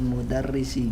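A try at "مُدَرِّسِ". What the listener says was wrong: Muda ra-nya terkesan seperti orang barat bilangnya. Mudarrisi.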